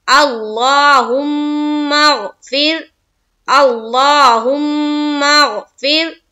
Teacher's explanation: پھر فا کو را سے ملائیں گے لیکن ہم باریک کریں گے۔